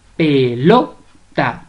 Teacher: La mayor fuerza de voz la lleva en lo.